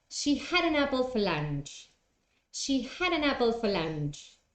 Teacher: consonant sound and then the other word begins with a so had an apple is said all together in one go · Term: linking